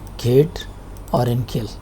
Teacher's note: One of the velar sound is k sound. This is voiceless, as you have in kid or in kill.